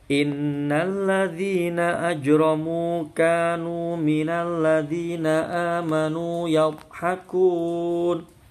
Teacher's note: ajramu jimnya qalqalah sughra mantul kecil, roknya tafkhim